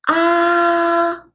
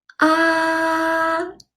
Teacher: the first tone in Chinese is ah it's a high flat tone